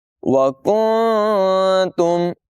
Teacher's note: پر نون ساکن کے بعد تا حروف اخفا میں سے ہے، اخفا کریں گے یعنی نون کی آواز کو ناک میں چھپا کر ادائیگی کریں گے